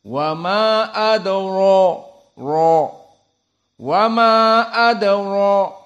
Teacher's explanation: di sini dalam keadaan mufakhamah wa adro ro wa Ma adro maka ro min hurufi tafkhim bukan muabbad tetapi muaqqatan di sini karena dia fathah maka ditafhimkan dan apalagi bertemu dengan alif menjadi Mad thabii'i maka ad ro